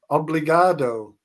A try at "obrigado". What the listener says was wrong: Yeah, you still messed it up on the second. There's no L. I don't know where you're getting that L from. It's obrigado.